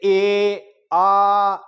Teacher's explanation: लंबा बोल के देखें तो आप जितनी बार बोलेंगे तो ए का ए ही निकलेगा लास्ट तक, आ का आ ही निकलेगा